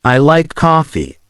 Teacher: with emphasis on the word like it shows that you enjoy coffee